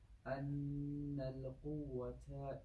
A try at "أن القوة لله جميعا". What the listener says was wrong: أن لا, that's why I was saying it. There's no قلقلة on the lam.